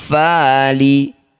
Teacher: Cara bacanya bunyi nun dengungkan dua harakat saat dengung lisan kita sudah bersiap bunyikan fa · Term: ikhfa